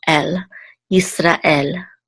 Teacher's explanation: we know that the accent is on the last syllable